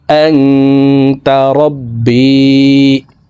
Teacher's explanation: নুন সেকেন্ডের পরে ইকফার হরফ তা আসছে, এই কারণে এই নুন সেকেন্ডকে নাকের ভিতরে লুকাইয়া গুন্নার সহিত পড়ব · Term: ইকফা গুন্না